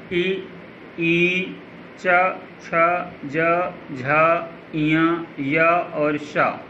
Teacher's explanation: दूसरा है इ, ई, च, छ, ज, झ, इय, य और श। उच्चारण स्थान तालु है और वर्ग का नाम तालव्य है।